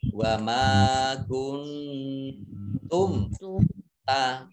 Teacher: Nun sukun bertemu dengan huruf ta, bacaan ikhfa atau samar-samar